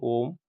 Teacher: प्लुत स्वर क्या होता है, 2 से अधिक ले लेता है, जैसे ओम का उच्चारण करते हैं